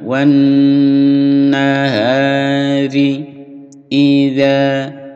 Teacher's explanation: dengung bacaan ghunnah lebih mendengung di hidung ditahan